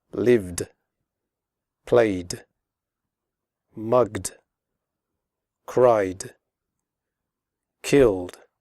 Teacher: After voiced sounds such as v, g, and y, and all vowel sounds, the final ed is pronounced like d, as in the word good.